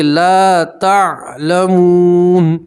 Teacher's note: तो आप नून साकिन का इख्फा करेंगे और 1 अलिफ के बराबर गुन्ना भी करेंगे